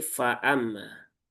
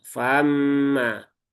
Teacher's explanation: masih tanpa sadar meringankan hamzah yang berharakat fathah ketika di tengah-tengah seperti itu sehingga terbaca fa ya famma. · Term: hamzah fathah